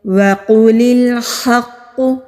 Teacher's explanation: قوف مستعلیہ حروف میں سے ہے، موٹے حروف میں سے ہے۔ قوف کے اوپر تشدید ہے، تشدید والے حرف ذرا مضبوطی کے ساتھ ذرا رک کر پڑھے جاتے ہیں